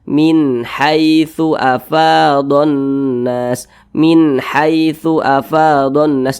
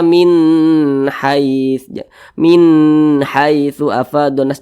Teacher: dibaca jelas tidak berdengung jadi dibaca pendek saja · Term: izhar halqi